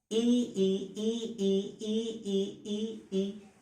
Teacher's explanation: ये तालु से निकल रही हैं, तो इसका उच्चारण स्थान जो है तालु होता है।